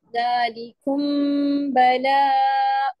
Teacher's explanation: یہاں پہ میم ساکنہ کا رول ہو رہا ہے، سو اس وجہ سے یہاں پہ ہم 2 کاؤنٹس کے قریب جو ہے وہ غنہ کریں گے